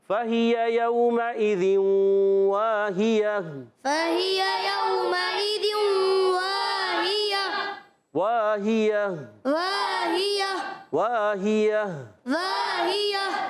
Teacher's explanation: हा अदा होता है अलग के नीचे वाले हिस्से से, या पर ज़बर है वाहिया, तो ये याद रखें हरकत को बग़ैर खींचे अदा करेंगे। या पर ज़बान आने की वजह से या मुतहर्रिका है, वस्ते ज़बान वस्ते तालु से अदा करेंगे · वाव अलिफ ज़बर वाह अलिफ मद्दा है, खींचना है, वाव में होंठ गोल रखने। हा अदा होता है अलग के नीचे वाले हिस्से से, या पर ज़बर है वाहिया, तो ये याद रखें हरकत को बग़ैर खींचे अदा करेंगे।